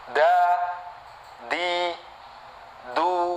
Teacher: dengan gusi atas hai lalu yang kedua huruf Dal ya sama keluar dari ujung lidah nempel di gusi atas